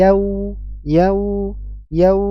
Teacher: fathah bertemu dengan huruf wau sukun ini disebut dengan Lin yau sempurnakan suara huruf wau yaitu jangan sampai tebal ya tidak tebal suaranya bukan Yao tapi yau yau yau ya bukan Yao tapi yau